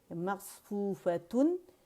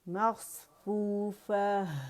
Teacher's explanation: رخاوہ ہے, آواز چل رہی ہے, اس میں صفیر ہے, اس میں اطباق ہے. ٹھیک ہے, اطباق ہے, اس میں ہمس ہے.